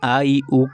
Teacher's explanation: ये ह्रस्व स्वर भी कहे जाते हैं क्योंकि इनके उच्चारण में दीर्घ स्वरों से कम समय लगता है। तो अ इ उ जो ह्रस या ह्र ह्रस्व ई ह्रस्व उ नाम से इसको पहचानते भी हैं क्योंकि इनके उच्चारण में दीर्घों से कम लगता है।